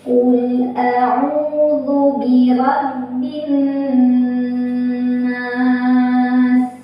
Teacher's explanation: Qul adalah mutlak karena ada lam sukun yang bertemu dengan huruf yang bukan lam atau bukan ra. Cara baca lam sukunnya jelas atau diizharkan.